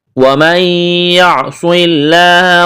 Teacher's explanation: وَمَن يَعْصِ اللَّهَ، یہاں ادغام کریں گے، نون ساکن کے بعد یا ہے، غنہ کریں گے، صاد کو موٹا کرنا ہے، سیٹی کی آواز پیدا کرنی ہے، لفظ اللہ کے نام سے پہلے زیر ہے، لفظ اللہ کے نام کو باریک کرنا ہے۔